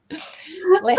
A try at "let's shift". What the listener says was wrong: Not left shit. It's let's shift.